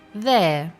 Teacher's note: the word there has a silent R so what you hear is there